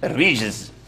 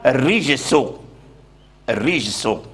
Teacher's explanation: الرجز اخف من الرجس لان الزاي الزاي مجهور والجيم كذلك مجهور واما السين فهو مهموس مهموس